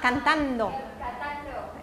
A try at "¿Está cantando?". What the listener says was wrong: No, no, la entonación es muy, muy importante en la pregunta. ¿Está cantando? No es pregunta.